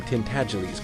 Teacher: It rhymes with sneeze and the accent is on the second syllable and the G is soft